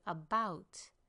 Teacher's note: Two syllables. The first syllable is a shortened syllable. It's an unstressed syllable, so we say about and lengthen the second one.